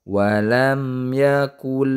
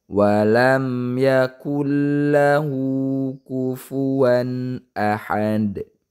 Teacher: Itu nun sukunnya dimasukkan ke dalam huruf lam. Namanya idgham. Idghamnya idgham bila guna.